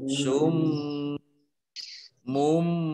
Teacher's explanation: Ini ada mim tasdid dibaca mendengung. Atau gunah ditahan dua harokat